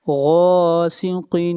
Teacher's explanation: غین کو موٹا پڑھا جائے گا. غین بھی حروف مستعلیہ میں سے ہے